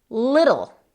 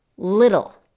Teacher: Con esas T's no tienes que echar aire, suenan más como una D.